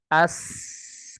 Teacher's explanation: ketika kita sukunkan ah, kan keluar udara. Udara itu keluar dengan deras